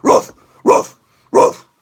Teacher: doing a pitbull bark is essentially a false cord scream already